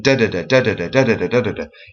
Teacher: a dactyl is a falling rhythm. In other words, it starts stressed and then it is unstressed